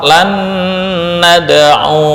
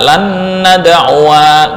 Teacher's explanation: walaupun ada alif tetap dibaca pendek